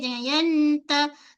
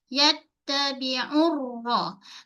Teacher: Okey, nun jumpa ya berlaku hukum idgham ma'al gunnah. Kemudian yatta pada ta, pastikan kita tahan suara, jangan mengalir, jangan yanta, tak nak.